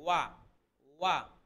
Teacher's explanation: ওয়া আমিলুস, ওয়া, ওয়াও উচ্চারণ করতে গেলে দুই ঠোঁট গোল হবে